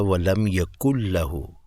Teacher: اب میں پڑھوں گا وَلَمْ يَكُنْ لَهُ، لیکن اگر مجھے یہ زبانی یاد ہوتا کہ جزم والے نون کے بعد لام آئے گا تو اس کے اوپر نا میں نے ادغام کر کے پڑھنا ہے